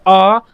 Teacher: पूरा गला आपका खुल जाता है, जीभ बिल्कुल नीचे बैठ जाती है। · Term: विवृत स्वर